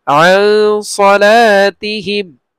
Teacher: নুন সাকিনের পরে সাদ আসছে ইখফা, ইখফা গুন্না হবে, নুনটাকে আমরা গুন্না করব